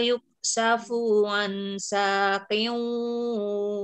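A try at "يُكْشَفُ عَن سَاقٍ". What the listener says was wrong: ulangi yuk safufunya pendek yud'auna nanya pendek sujudi dinya juga pendek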